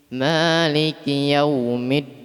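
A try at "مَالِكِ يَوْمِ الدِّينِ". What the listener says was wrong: Maliki Yaumiddin. Bukan yaumi kasrah. Mi.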